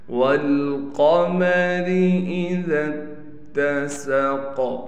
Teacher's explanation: جب ہم ذال کو تا سے ملائیں گے تو تا پر تشدید ہونے کی وجہ سے تھوڑا ٹھہراؤ بھی کیا جائے گا، سین میں سیٹی نکال کر پڑھیں گے۔ قاف کو موٹا بھی پڑھا جائے گا اور قاف پر قلقلہ بھی کیا جائے گا۔